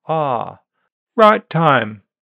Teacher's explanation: In old-fashioned RP, a back-open monophthongal vowel is possible.